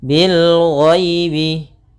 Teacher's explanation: Kemudian di sini ada ya sukun yang didahului dengan fathah, maka kita namakan dengan bacaan lin, lembut dalam pelafalannya